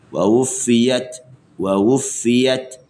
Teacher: Ha datangkan syiddah huruf ta. Lepas baru kita datangkan hams.